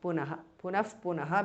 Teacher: Punaha, Visarga changes to Upadhmaniya.